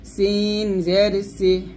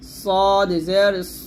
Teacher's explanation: সিন জের সি পাতলা আর সদ হবে মোটা করে